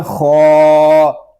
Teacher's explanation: خا کھڑا زبر خا، خا کو ہم ایک الف تک کھینچ کر پڑھیں گے کیونکہ خا کے اوپر کھڑا زبر ہے. خا کو ہم پر پڑھیں گے کیونکہ یہ حروف مستعلیہ میں سے ہے